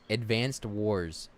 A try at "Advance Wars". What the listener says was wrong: No, it's not advanced. It's Advance Wars because you're like advance like you're moving forward. advance. Advance Wars.